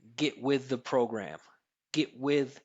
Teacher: I'm not releasing this T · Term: stop T